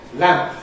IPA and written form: læmp (lamp)